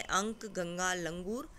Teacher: Okay, उसके बाद हमने अनुस्वार पढ़ा था कि केवल नाक से जो हवा निकलती है वहाँ अनुस्वार है।